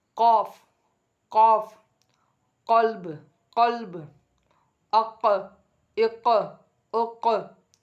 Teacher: நாக்குடைய கடைசி நாக்கு இருக்குல்ல, அதோடைய லாஸ்ட்டு உள்பகுதி இருக்குது பாருங்கள், அந்த பகுதி மேலே உள்ள நாசியோட முரசோடு இணையும் பொழுது எழுத்து வரும்